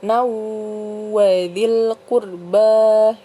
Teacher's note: hukum tajwidnya adalah Idgham Bighunnah Jadi dibacanya berdengung